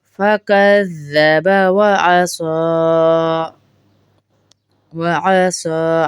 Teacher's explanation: صاد کو لمبا ہوگا، صاد لمبا کریں گے کیونکہ کھڑا زبر ہے۔